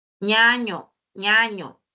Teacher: las palatales es porque el la lengua, el dorso de la lengua sube hacia al al paladar